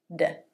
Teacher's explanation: the tongue flaps against the roof of the mouth for the d